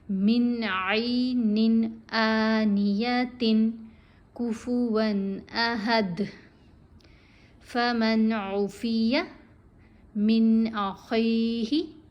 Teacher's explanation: غنہ نہیں ہوگا اور اس کو نون کو ظاہر کر کے پڑھیں گے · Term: بلا غنہ